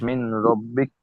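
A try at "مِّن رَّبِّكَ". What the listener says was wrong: মিন নয়, মির মির। মিন নয়, কার সাথে হবে মিমটা? মিমটা কার সঙ্গে হবে? মিম নুনজের মিন, তাই তো?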